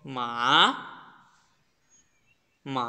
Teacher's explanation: আপনার ভয়েসের second level থেকে আপনি চতুর্থ লেভেল পর্যন্ত উঠবেন। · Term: থার্ড টোন